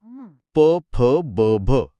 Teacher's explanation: हे ध्वनी ओठ मिटल्याशिवाय उच्चारताच येत नाहीत. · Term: प वर्ग